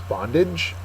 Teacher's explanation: it's a noun the uh first syllable is accented